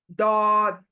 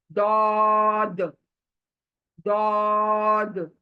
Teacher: Right hand side के दाढ़ जो है हमारे ऊपर के, उसको हमारी जबान का किनारा टच करेगा, और मोटी आवाज आएगी। दौद, दौद। ये मोटी आवाज है, सिफत इसकी मोटी है। · मखरज, दोनों दाढ़ों को जबान का किनारा लगना है, चिपकना है। दौद। देखिए, राइट हैंड साइड के दाढ़ जो है हमारे ऊपर के, उसको हमारी जबान का किनारा टच करेगा, और मोटी आवाज आएगी।